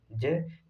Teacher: ज तीसरा वर्ण है, सघोष तो है लेकिन महाप्राण ध्वनि नहीं है।